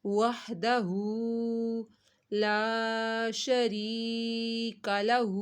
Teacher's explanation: تھا تو لفظ اللہ کو موٹا پڑا، الا اللہ وحدہ، وحدہ، ہو کے اوپر الٹا پیش ہے تو ہو کو بھی ایک الف کے برابر کھینچنا ہے